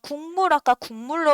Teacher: 비음이 아닌 놈이 비음을 만나서요. 비음으로 바뀌는 거예요. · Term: 비음화